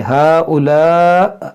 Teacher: یہاں پر ہم رکیں گے تو یہ حمزہ ساکنہ ہوگا تو اس کو جھٹکا دے کر پڑھیں گے